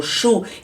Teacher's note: quando eu falo chu, eu falei dois sons só, o som do X e o som do U. E a palavra chuva tem 5 letras e 4 fonemas.